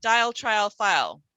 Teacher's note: think of where the l is pronounced your tongue is right up the front of your mouth right up behind your teeth